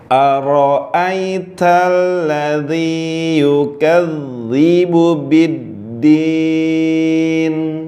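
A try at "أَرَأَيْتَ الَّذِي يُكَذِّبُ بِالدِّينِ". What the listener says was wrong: Ulangin. Tadi ladzi itu masuk hidung. Nah, dibuka hurufnya. Biddin. Nah, ini di akhir. Ini nama hukumnya mad arid disukun. Ini bisa 2 harokat, bisa 4, bisa juga 6. 6.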